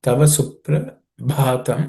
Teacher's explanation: when again the bha shows up it has to be aspirated